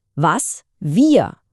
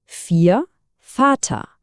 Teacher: Das deutsche W klingt nämlich wie ein englisches V. Zum Beispiel was, wir. Und umgekehrt klingt das deutsche V wie ein englisches F.